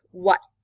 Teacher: Take, for example, us American speakers, when we say the word what, we don't release it, but British English speakers will actually release that T sound. So when they say it, it would sound more like what, making that T sound more pronunciated.